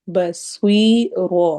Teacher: رو کو ہم نے موٹا کرنا ہے، اور ایسے ہی سوئی کو بھی یا مدہ ہے، چونکہ 2 حرکہ لمبا کرنا ہوتا ہے تو ہم اس کو تھوڑا لمبا کریں گے۔ بسوی رو میں رو کو موٹا اور تھوڑا سا لمبا کرنا ہے